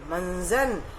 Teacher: तो यहाँ पर देखिए, इस शब्द में आधा न्य उसका प्रयोग हुआ है। मंजन, इसका उच्चारण करेंगे तो न के जैसा उसका उच्चारण, आधा न का उच्चारण निकलता है